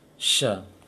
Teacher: Jangan baca sa seperti sin. Dia harus kuat anginnya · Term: shin